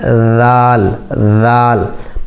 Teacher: اسی طریقے سے ذال، ذال میں یہ جو زبان کا کنارہ ہے اس کو دانت کے کنارے لگانا ہے